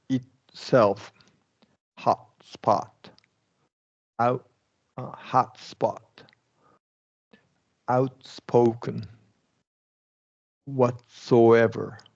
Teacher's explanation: we're going back to a stop T and then just an S sound.